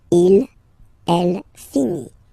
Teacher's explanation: final T not pronounced